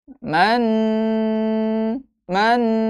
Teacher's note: tetap didengungkan tetap didengungkan dengan dengung panjang dua harakat